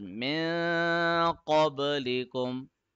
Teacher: we are stretching the sound of noon in our nose for 1 second, making sure that our tongue does not touch anywhere. So this is min qablikum la'allakum tattaqun. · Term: ikhfa rule